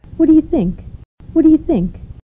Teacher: 여기서는 T와 D가 유사한 발음이죠. 그래서 T가 이렇게 탈락하는 것이고요.